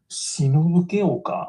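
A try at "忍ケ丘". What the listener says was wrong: It's Shinobugaoka, not Shinobuke Oka. Shinobugaoka. But ga is K, it's K instead of ga.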